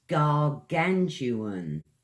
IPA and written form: ɡɑːˈɡantjʊən (gargantuan)